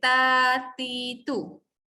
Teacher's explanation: bila nak sebut huruf ta, dal dengan to ni mesti menyentuh gusi atas.